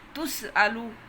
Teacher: تسألو حمزہ کی آواز پوری